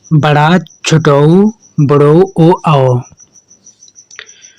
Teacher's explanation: वे स्वर जिनके उच्चारण में जीभ का पिछला भाग ऊपर उठता है कहलाते हैं पक्ष स्वर